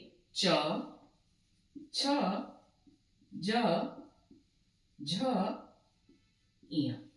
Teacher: च वर्ग का उच्चारण हम लोग करते हैं तालु से।